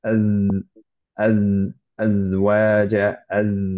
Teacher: এখন সেই জায়ের একটা প্রপার্টি হচ্ছে যে সেটা বাজিং সাউন্ড আসবে